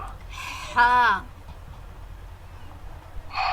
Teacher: ہا حلق کے درمیانی حصے سے اور تیز ہوا کی شور کے ساتھ